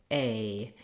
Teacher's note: It's an eh gliding to an I, a. For most people, just holding that A longer will help you get the correct sound. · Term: diphthong A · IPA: /eɪ/